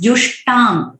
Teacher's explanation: ट अल्प प्राण है, महाप्राण नहीं है